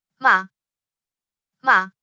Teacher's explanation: the first tone has the highest end consistent pitch